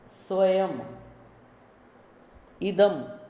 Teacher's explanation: जब यह यानी अनुस्वार किसी शब्द के अंत में आता है तो म रूप में बोला जाता है